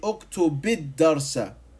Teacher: I put a kasra on the command verb as a helping vowel.